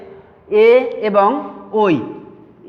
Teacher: যেমন কণ্ঠ ও তালুতে উচ্চারিত হবে আমাদের এ এবং ওই, এ এবং ওই ধ্বনি উচ্চারিত হবে কণ্ঠ ও তালু, কণ্ঠ ও তালু।